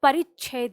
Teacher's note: तो वो कम इसलिए सुनाई देता है क्योंकि उसके साथ उसका स्वर नहीं है, उसका साउंड किस पे जा रहा है, यानी इस च का जो साउंड है, इसकी जो ध्वनि है वो छ से चिपक के आ रही है क्योंकि इन दोनों के बीच में कोई स्वर है नहीं, ये स्वतंत्र नहीं है।